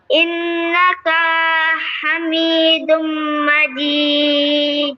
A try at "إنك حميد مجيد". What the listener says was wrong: کا کو لمبا نہیں کرنا ہے. إنك حميد مجيد.